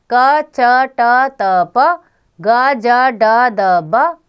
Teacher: जिन व्यंजनों के उच्चारण में श्वास वायु कम मात्रा में प्रयोग होती है वे अल्प प्राण व्यंजन कहलाते हैं प्रत्येक वर्ण का पहला तीसरा